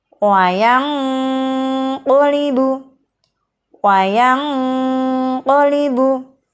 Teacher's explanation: Saat mengucapkan nun sukun, posisi lidah kita sudah betul-betul pada posisi makhraj qaf, sehingga saat dengung ini terdengar bunyi eng. Karena huruf qaf berada pada pangkal lidah dan karena huruf qaf juga huruf isti'la, maka bunyi dengung dan samar ini mempunyai kecenderungan dengung yang tebal. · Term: ikhfa ab'ad